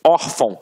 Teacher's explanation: reparem que a sílaba tônica está na penúltima sílaba. Por isso é uma paroxítona. E uma paroxítona terminada em ditongo.